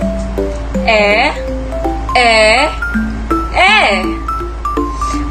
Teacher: Ang letrang E naman ay paharap, pagitna, di pabilog.